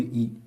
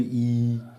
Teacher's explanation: आप छोटा बोलो बड़ा बोलो तो आपको ज़्यादा समय इसमें लगेगा और ज़्यादा वायु का प्रयोग करना पड़ेगा